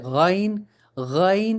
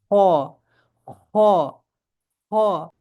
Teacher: یہ حلق کے اوپر والے حصے سے ادا ہوتے ہیں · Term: غین اور خا